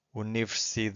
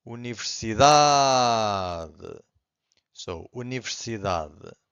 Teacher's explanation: Every time this happens, the final syllable, the last one, it's very weak. It's not silent, but it's very weak. It's hard to hear. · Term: strongest syllable